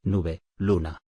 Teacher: Representa el sonido nasal alveolar.